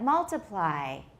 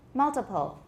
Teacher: We can hear there's a difference in length, right? Which one's shorter? Right, multiply sounds longer.